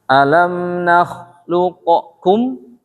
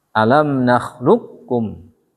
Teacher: karena masuk ke idgham maka menyatu dia. Maka qafnya hilang.